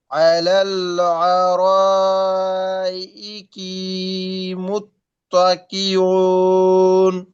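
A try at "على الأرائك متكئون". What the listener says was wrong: হ্যাঁ ইকি তাড়াতাড়ি ভাই আলাল আরো চার আলিফ টান ইকি টান হয়ে গেছে মন ভাই একটু ট্রাই করেন তো হুম ওয়া আজওয়াজুহুম ফি জিলালিন বলেন হুম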